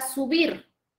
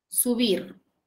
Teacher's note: la palabra subir, la mayor fuerza de voz recae en la última sílaba. Y es una aguda, pero no se tilda.